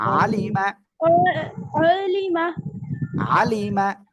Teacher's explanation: আইন জবর আলাম জিল্লি আলি মিম জবর মা আলিমা আলিমা না, আলিমা, আইনটা গলাটা চেপে পড়তে হবে